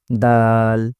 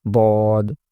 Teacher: দাল হবে স্বাভাবিক বারিক করে বদ উচ্চারণ করতে হবে পুর করে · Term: পুর এবং বারিকের পার্থক্য